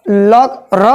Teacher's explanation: र जब हम बोल रहे हैं तो जीभ लटपटाते हुए आ रही है, यानी लड़ते हुए आवाज आ रहा है। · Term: लुंठित व्यंजन